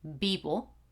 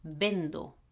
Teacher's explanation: again it's a v but it sounds like a b